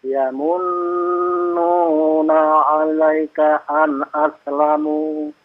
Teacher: nunnya juga ada tasdidnya, ditahan 2 harokat. Kemudian dia juga dipanjangkan 2 harokat karena ada mat tabi'i